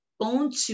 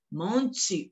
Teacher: o E tem som de I